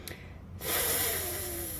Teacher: there's no vibration because there is sound but no voice. The vocal cords don't vibrate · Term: voiceless sound